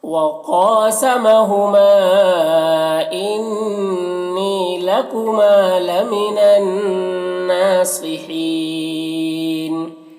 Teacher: وقف کی صورت میں نون کا زبر سکون سے بدل جائے گا تو مد عارض وقفی ہوگا